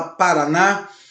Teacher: A última sílaba da palavra ela é tônica, ou seja, ela é uma sílaba mais forte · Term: oxítona